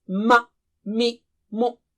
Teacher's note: So in all these cases, the lips are the makhraj of the letter Mim